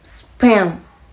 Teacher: In pen, the P is aspirated, and span, the P is unaspirated.